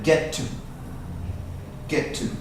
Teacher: Run those two sounds together. Get to. Get to. Like it's one T.